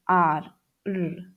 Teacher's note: the tongue is moving back when you say the letter sound r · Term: retroflex sound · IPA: /r/